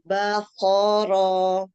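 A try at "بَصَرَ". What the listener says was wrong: Kasih ini tebalnya sudah dapat. Kasih sofir depannya. Basoro.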